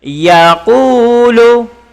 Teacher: ku panjang 2 harakat karena baris depan bertemu dengan waw. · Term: mat asli